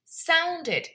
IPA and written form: ˈsaʊndɪd (sounded)